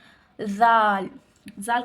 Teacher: زبان کی نوک اور سامنے کے اوپر والے 2 دانتوں کے کنارے سے ادا ہوتی ہیں۔